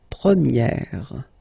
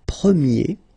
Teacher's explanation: So it's open, this E sound.